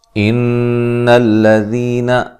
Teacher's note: نون مشدد پہ غنہ ضروری ہے، ٹھیک ہے، غننے کی مقدار 1 الف کے برابر ہوتی ہے